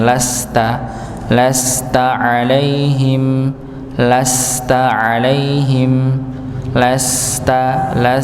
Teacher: Lasta 'alaihim sama lamnya tidak dibaca panjang, satu harokat saja karena bukan pasangannya.